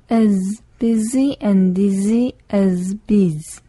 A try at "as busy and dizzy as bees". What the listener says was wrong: 네, 잘했습니다.